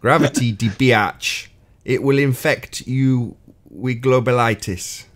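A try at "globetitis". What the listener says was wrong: Yeah, no, globalitis, there's two T's there.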